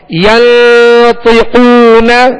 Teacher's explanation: یہاں پر بھی اخفا کا غنہ ہے، نون ساکن کے بعد طا حروف اخفا میں سے